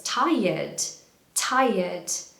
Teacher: This is a really common word, and a lot of my students pronounce it as tired or tired, but actually, again, in the British accent, we very often try to remove the R. This word, the R actually turns into a Y.